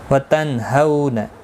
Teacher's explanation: نون ساکن کے بعد ہا آیا ہے، اظہار حلقی ہوگا، گنہ نہیں کریں گے. ہو واولین ہے، تھوڑا نرمی کے ساتھ آدھے الف کی مقدار کے برابر کھینچ کر پڑھیں گے.